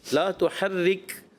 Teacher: را مشددہ اپنی حرکت کے تابع ہوتی ہے تو اس کے لیے زیر ہے تو باریکی رکھنی ہے